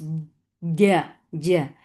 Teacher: J for fatha open jaws. There should not be any flow of breath here, otherwise it will sound like ch.